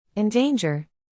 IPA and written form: ɪnˈdeɪndʒɚ (Endanger)